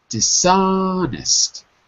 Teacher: in dishonest the stress is on the second syllable